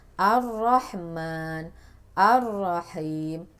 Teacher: bergetarnya ujung lidah dengan getaran halus maksimal 2 getaran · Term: takrir